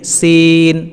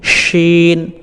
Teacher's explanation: তালুর সাথে স্পর্শ করে আমরা শিন এই কথাটি আমরা উচ্চারণ করব সিনের ক্ষেত্রে দন্তাস উচ্চারণ হবে এবং এই শিনের ক্ষেত্রে তালবস উচ্চারণ হবে